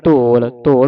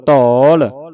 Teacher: ਇੱਥੇ ਲੱਗਿਆ ਕਨੌੜਾ ਪੜਨਾ ਧੌਲ ਮੂੰਹ ਖੋਲ ਕੇ